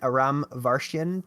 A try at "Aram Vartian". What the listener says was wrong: So Aram Vartian. Everyone looks at it and thinks Vartian like Martian with a V.